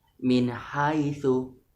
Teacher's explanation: Mengucapkan huruf nun sukun atau tanwin dengan jelas tanpa dengung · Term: idhar halki